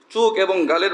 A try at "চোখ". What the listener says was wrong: আরে ভাই, সিলেটি উচ্চারণ না, বাংলাদেশি বাঙালি উচ্চারণ করো, চোখ না চোখ, চোখ তো এটা সিলেটে বলে, ঢাকাতে চুক বলে না, চোখ বলে।